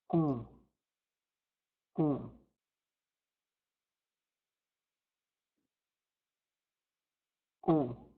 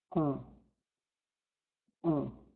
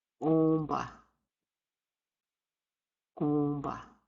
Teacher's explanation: The most unique vowel sound is the nasal O. You say the letter O while you're allowing the sound to vibrate in your nasal cavity.